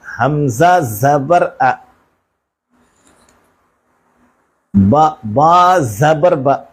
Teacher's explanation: حمزہ پر زبر کی حرکت ہے، زبر کو جلدی پڑھیں، تھوڑا بھی نہ کھینچیں۔